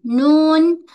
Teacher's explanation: Tak kira baris. Okey, sama ada baris ke tidak ada, mesti ada sifat gunnah. Suara naik ke hidung. Nah. Bila kita tekan, hidung kita tersekat sebab di situ tempat gunnah kan.